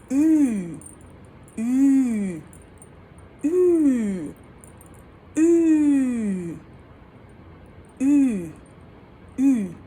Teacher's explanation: The long U umlaut is perhaps one of the most closed sounds ever. You're basically saying E and ooh at the same time.